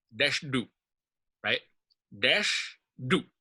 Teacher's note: du is also taking on some stress.